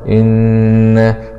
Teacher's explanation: نون شدة فتحة مع الغنة إن ميم فتحة ألف مد جائز منفصل إنما همزة فتحة آه